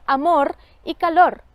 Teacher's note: Otro reforzamiento también enfático es la articulación múltiple de la vibrante final en palabras como amor y calor.